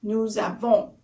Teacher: So nous, the S at the end sounds like a Z. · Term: liaison